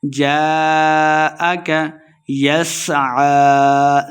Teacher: سین پہ سیٹی کی آواز آئے گی · الف مدہ ہے اس کے اوپر مد بھی ہے تو ہم نے اس کو خوب لمبا کر کے پڑھنا ہے